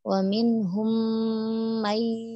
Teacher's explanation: Jadi idgom biyaguna masuk dengan dengung ya, tahan kira-kira 2 atau 3 harokat · idghamnya kurang ditahan ya jadi tahan kira-kira dua atau tiga harakat